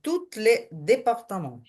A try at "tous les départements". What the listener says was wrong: Тільки не тут, а ту. Туль департамент. швидкому мовленні те, що це льо, буде вимовлятися як л. Туль, якби туль департамент. Туль департамент.